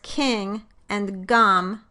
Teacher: For the velar sounds, the tongue body, or dorsum, touches or moves toward the soft palate, or velum.